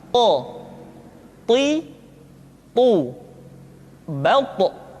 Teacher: Sehingga dengan dua sifat ini, maka ketika to diucapkan, suara kita terdengar menebal. · To diucapkan dengan menyentuhkan ujung lidah dengan gusi-gusi dua gigi seri bagian atas. Sifat yang dimiliki oleh huruf to yang mesti nampak ketika kita ucapkan adalah sifat al-isti'la dan sifat al-itbaq.